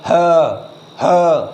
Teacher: स्वर यंत्री, कंठ के भीतर से आवाज़ आती है